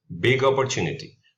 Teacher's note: the two words merge together with the consonant sound flowing directly into the vowel sound